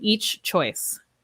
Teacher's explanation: we have the ch sound but we cannot link this sound